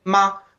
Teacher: because it's it's neutral tone it's very light it's like you just put it there